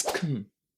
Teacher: Can you hear how quick, how fast this first syllable is?